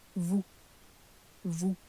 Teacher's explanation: Without the S being pronounced on the end.